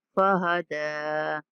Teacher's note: دال کے اوپر کھڑا زبر ہے، تو دال کو کھینچ کے پڑھنا ہے۔